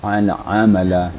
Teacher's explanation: ain itu harus terasa getarnya di tengah-tengah halangkungan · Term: huruf halak